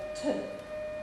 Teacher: the air build up behind it and I release it and it's called a plosive sound because it's a release of a puff of air